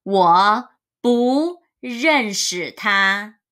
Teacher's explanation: Because here, after 不 is 认。Zhen is a fourth tone. So, if bu is in front of a fourth tone, it would be changed to the second tone.